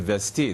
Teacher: The z devoices to s before t, and you get the infinitive vesti.